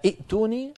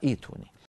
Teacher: نبدل الهمزه الساكنه التي هي همزه قطع نبدلها حرف مد مجانس لحركه الهمزه الاولى